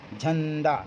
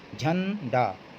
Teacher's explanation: नाक से आवाज़ थोड़ा निकलती है इसमें